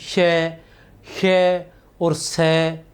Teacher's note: संघर्षी व्यंजन, इनके उच्चारण में वायु में अधिक संघर्ष होता है